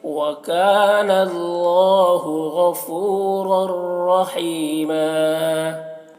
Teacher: تنوین کے بعد را ہے حروف یرملون میں سے، تو ادغام تام ہوگا